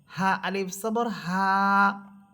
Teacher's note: এরপরে হরফ হা এখানে বাতাসের কোন শব্দ হবে না